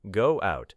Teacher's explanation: When one word ends in a vowel sound and the next begins with another vowel sound, speakers may add a small linking sound. Go out may contain a slight w connection.